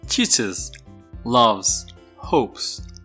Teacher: the final s or e s can be pronounced as s as in hopes or z as in loves or is as in teaches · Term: third person s